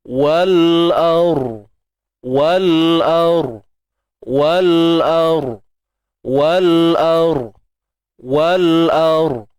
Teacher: Ra mati sebelum dia baris atas. Bila ra mati sebelum dia baris atas, kenalah tebal.